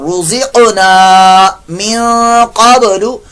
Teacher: قاف ساکن کے اندر قلقلہ رزقنا من قبل نون ساکن کے بعد قاف آیا اخفا کا قاعدہ.